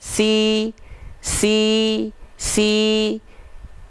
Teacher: ketika sinnya berharakat kasrah maka dia direndahkan rahang bawahnya sambil senyum karena dia tipis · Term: huruf Sin